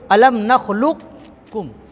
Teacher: پہلا قاف پر ہے، دوسرا کاف باریک ہے، لیکن ان کا مخرج قریب قریب ہے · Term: ادغام متقاربین